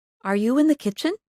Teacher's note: make your voice go up at the end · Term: rising intonation